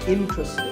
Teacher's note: This is mispronounced sometimes as interesting, but there are only 3 syllables, in-tra-sting, and the stress is on in